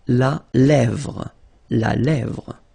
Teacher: accent grave here. Really open.